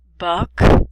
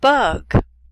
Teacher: the only difference in these two sounds is voicing the k sound is a voiceless sound and the g or